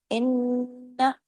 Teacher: ان، لیکن نون کی آواز کو اوپر آ کی آواز میں مدہ نہیں لگانا ہے، یہیں پر اتنا پڑھنا ہے، کیونکہ دیکھیں اس کے ساتھ الف مدہ نہیں ہے۔ ان نون پہ تشدید ہے، ڈبل نون ہے، غنہ ہوگا بڑا، آواز دیر تک ناک میں چھپے گی، اس غنہ کو اکمل غنہ کہتے ہیں۔